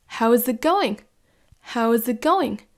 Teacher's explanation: Vous voyez que la petite pause, elle se fait en fait entre les deux groupes de mots. How's it? Petite pause, going.